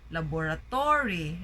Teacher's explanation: Sometimes we hear people say laboratory, right? So they put the stress in the to, laboratory. So that's not the accurate way of saying it.